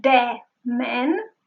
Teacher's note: She was not using the dental sound.